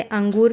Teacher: यह स्वर के बाद आने वाले व्यंजन कहलाते हैं, जिनकी ध्वनि नाक से निकलती है। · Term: अनुस्वार